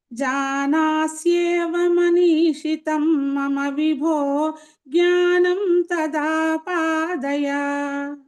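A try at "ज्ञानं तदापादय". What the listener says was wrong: జ్ఞానం తదా పాదయ అన్నప్పుడు పెదాలు ముయ్యకుండా చెప్తున్నారు కదండి.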